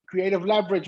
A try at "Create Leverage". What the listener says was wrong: Create Leverage, not creative. Create Leverage. You said creative. It's not.